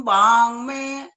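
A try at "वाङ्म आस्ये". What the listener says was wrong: गलत बोला है, मैं बोला है, मैं। अब माँ बोल रहे ना, वो पहले बोलने में तो मैं बोल रहा वही तो तुम्हारी प्रैक्टिस यहाँ करके फेल हो जाती है ना, यहाँ पर ध्यान दे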